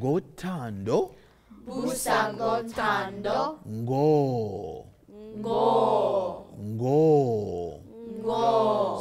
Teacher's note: you have to get the NG sound vibrating with your sinus then let go with that hard G